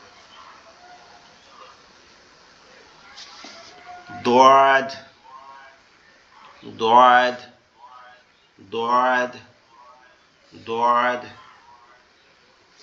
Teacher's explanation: দটা হচ্ছে আমাদের জিহ্বার গোড়া ডান পাশের উপরের মাড়ির দাঁতের এর সঙ্গে লাগবে। মানে গালটা একটু ডান সাইডে বেকে জিহ্বাটা ওখানে লাগানোর চেষ্টা করতে হবে।